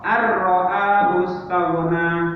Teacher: bacaannya nun sukun ini dimasukkan ke ro dan itu tidak menimbulkan dengungan melewati hidung.